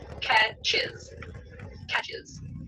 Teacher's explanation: Catch ends with ch, which is one of our buzzing sibilant sounds. So we need to add the syllable is onto it.